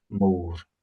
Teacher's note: It's just that classic Scottish rolled R with a long O.